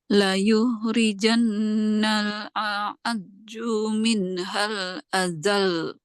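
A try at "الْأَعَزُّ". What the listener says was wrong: A'azzu, zai. Jangan ju.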